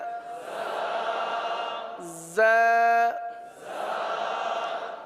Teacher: اس حرف کو ایک الف تک کھینچ کر پڑھیں گے